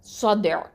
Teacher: தால் சுக்குன் வந்து என்னது, கல்கலா சுகரா கொடுக்கணும். அடுத்த எழுத்து என்ன இருக்குது, ஐனில் கெசரா இருக்குது.